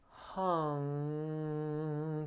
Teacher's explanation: you'll feel the tongue in the rear of your mouth lift and it actually closes the mouth off to the flow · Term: n-g sound